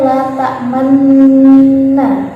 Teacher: Ismam artinya isyarah dhammah pada gunnah. Jadi dibacanya ada dhammahnya alias u.